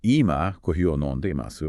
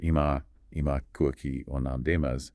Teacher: I've definitely noticed people drop the E in imasu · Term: vowel reduction